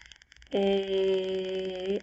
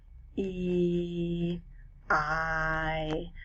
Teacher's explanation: if i say the sound of a i can feel the vibrations happening in my throat and you can also feel how the air is going fast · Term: vowel sounds